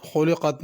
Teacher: خلقت میں موٹا قاف ہے، اس کو پر کر کے پڑھنا ہے، خا کو بھی پر کرنا ہے۔